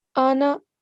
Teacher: This one is a special case. We wouldn't prolong the alif here.